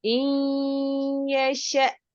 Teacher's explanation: اور یہاں پر دوسرا رول نون ساکن اور تنوین کا ہے، یعنی کہ نون ساکن اور تنوین کے بعد اگر یرملون یا را لام میم واو نون میں سے کوئی بھی حرف آ جائے وہاں پر ہم ادغام کرتے ہیں، یعنی کہ لفظ مرج ہو جاتا ہے. تو ہم حمزہ کو یا کے ساتھ ملائیں گے اور نون کو ہم مرج کریں گے. اور یہاں پر حمزہ ساکن حالت میں ہے تو ہم اس کو جھٹکے سے ادا کریں گے.